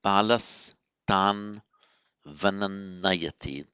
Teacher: Balaha, tan, the visarga followed by the dental t becomes balas tan